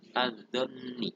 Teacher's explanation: Nah, di dalam kalimat tersebut alnya dinamakan al-syamsiyah karena setelah al hurufnya bersyiddah dan alnya tidak terbaca